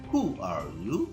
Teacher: Untuk statement WH questions, for example, who are you? Ya, dari tinggi ke rendah ya